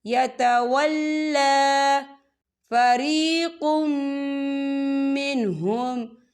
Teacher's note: لام کے پر کھڑی حرکات ہے، تو ہم اسے 2 یا 3 حرکت کے برابر کھینچیں گے۔